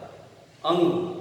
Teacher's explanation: नासिका अनुस्वार का उच्चारण स्थान होता है